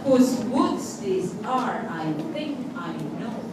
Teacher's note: Whose is unstressed, stressed on woods.